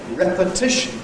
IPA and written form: ˌrepəˈtɪʃn (repetition)